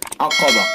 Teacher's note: عقبہ قاف کو پر کریں گے اور گول تا کو ہائے ساکنہ سے بدل دیں گے